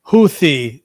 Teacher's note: that Arabic speaker from Saudi Arabia clearly was saying what sounds like a th in English. He wasn't saying t, you know?